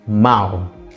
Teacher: Contoh, kata harimau pada silabel terakhir ada mau, ya kan? Terdiri dari onset nasal me dan nukleus au. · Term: diftong